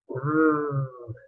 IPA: v